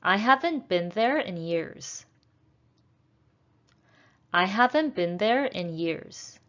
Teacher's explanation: in years is a falling intonation